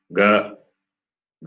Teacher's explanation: The third one ga, ga is non-aspirate.